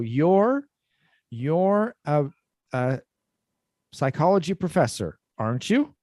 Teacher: when we have the positive first, so you're a psychology professor, aren't you? Okay. So in that case, it goes up.